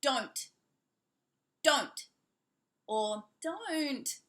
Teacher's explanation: the T will be pronounced a little bit heavier if someone's annoyed